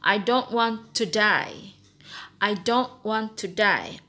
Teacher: you have to go flat, and then you go up a little bit, and you go down up to the dot.